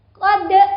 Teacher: Laqad itu adalah bacaan qalqalah, jadi boleh ada tambahan E.